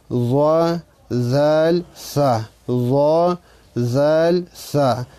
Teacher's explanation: زبان की नोक ऊपर सामने वाले दो दांतों के किनारे से अदा होते हैं. یعنی د ژبې سر چې هر کله د مخامخ برني غاښونو د سرونو سره ولګي، د کنارو سره ولګي، د دې نه ضا ذال او ثا ادا کېږي.